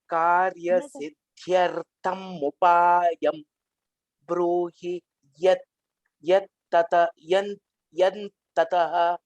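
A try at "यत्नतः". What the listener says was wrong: Yatnataha. Yan is not the yat. Yatnataha. So you have to practice the Mahaprana. The Mahaprana wasn't correct.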